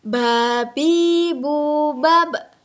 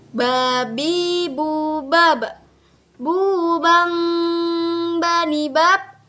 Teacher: huruf Ba ini nih cara melafalkannya bibir kita, dua bibir kita itu harus menyentuh.